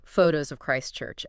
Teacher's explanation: >> So, you can't stop to admire the church. You have to just say photos of Christ Church as if it's one single word. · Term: chunking